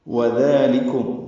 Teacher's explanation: واو ہونٹ کی نا تمام گلائی سے ادا کریں گے، دال نرمی سے پڑھیں گے اور 2 حرکات لمبا کریں گے۔